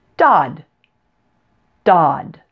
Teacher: is a flap T since it occurs between vowel sounds so the T sounds like an English D